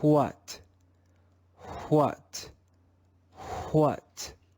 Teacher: the aspirated sound comes before the consonant sound